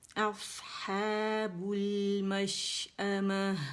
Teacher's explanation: آ کے لیے بھی جبڑا کھلے گا اور ما کے لیے بھی کھلے گا